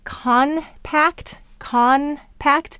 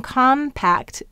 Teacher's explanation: say but if you change that n to a m compact because the p is on your lips as well it's simpler to say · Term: assimilation